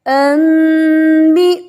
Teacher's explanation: نون کی آواز بدل جائے گی میم میں، تو نون نہیں پڑھا جائے گا، اب پڑھا جائے گا انبئونی. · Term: اقلاب